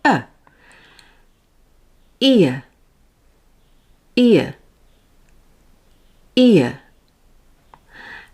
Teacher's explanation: my tongue is closer to the roof of my mouth for I, but then comes down with the jaw to neutral for Ear, ear, ear.